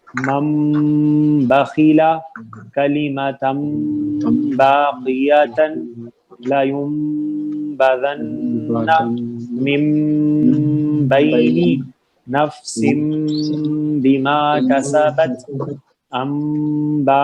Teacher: سب مثالوں میں نون ساکن یا تنوین کے بعد با ہے، تو اسی لیے جو ساؤنڈ ہے نون ساکن کی میم میں بدل رہی ہے